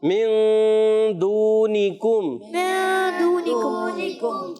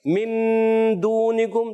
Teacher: اخفا کی معنی چھپانا. یہاں نون کو چھپا کر ادا کریں گے، ہلکا سے زبان کو مخرج میں ٹچ کریں گے